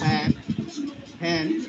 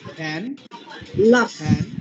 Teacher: নিচের ঠোঁটে কামড় দিয়া ফ্যান বলি